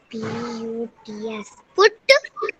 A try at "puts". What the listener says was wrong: Puts. S भी है ना. Puts.